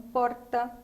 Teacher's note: em São Paulo você mostra que é com a ponta da língua e levando para o céu da boca